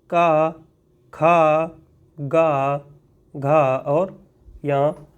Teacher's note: का वर्ग का उच्चारण करते समय जीभ जो है वह कंठ से टकराती है, इसीलिए का वर्ग का उच्चारण स्थान कंठ हो जाएगा।